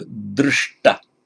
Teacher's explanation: It forms it, look at Sanskrit now, it forms its past participle regularly by adding ta, but remember, standard rule in Sanskrit where you get a root ending in a sh followed by a ta, both become palatized, retroflex. They both become subdotted, so drishta.